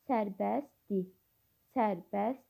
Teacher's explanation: Sərbəst yəni t samiti tələffüzdə düşür. Dir şəkilçisindəki R samiti də tələffüzdə düşür. İki səs düşmü var.